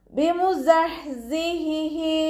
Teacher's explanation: ഹ മഖ്റജ് വരുന്നത് വസത്തുൽ ഹൽക്ക്, തൊണ്ടയുടെ മധ്യഭാഗം.